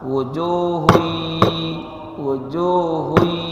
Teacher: ditahan didengungkan dua ketukan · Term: idgham bighhunah